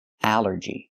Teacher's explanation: The rule is ALL makes the sound all, like ball and call. But here it makes the A sound, the short A like in apple and black. Allergy. It's 3 syllables.